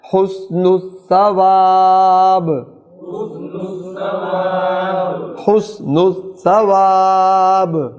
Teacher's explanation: اب با کے نیچے زیر کو وقف کی شکل میں ساکن پڑھیں گے تو با ساکن ہوگی تو قلقلہ ہوگا